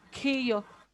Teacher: Aspirada, ¿no? Como si estuvieran cansados.